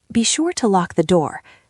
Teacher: be sure to is usually reduced and linked together, so it does not sound like three separate words. In fast speech, be becomes very short, often sounding like b or just b.